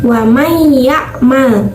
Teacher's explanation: tapi karena nunnya melebur ke huruf iya, maka nunnya tidak terdengar. Makanya dibacanya wa may ya'mal. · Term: idgham